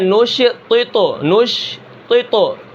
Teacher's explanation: زبان کی نوک کہاں لگتی ہے؟ ثنایا علیہ کی جڑوں میں اوپر والی، جہاں پر صفوں جیسی لکیریں بنی ہوتی ہیں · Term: نطعیہ